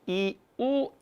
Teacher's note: 이 할 때는 혀가 앞으로, 우 하면 혀가 뒤쪽으로 빠지죠